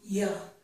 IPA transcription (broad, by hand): j